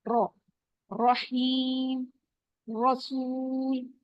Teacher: र जबर के साथ हमेशा मोटा होगा